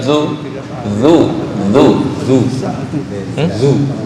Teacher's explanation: Kalau zu otomatis tuh lidahnya agak ke dalam dikit, itu yang kurang pas.